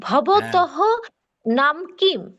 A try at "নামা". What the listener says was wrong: নাম না, নামা, নামা, এখানে ওই হর্ষ চিহ্ন নাই, নামা।